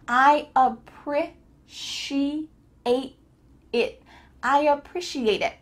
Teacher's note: make sure that there's not air coming out of your mouth finishing that T sound